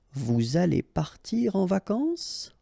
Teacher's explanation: You should raise your voice a little bit at the end just to inform the person that it's a question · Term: raise the voice